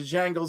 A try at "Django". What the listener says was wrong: You said the Django, and then you corrected yourself, and you still said the Django. The D is silent.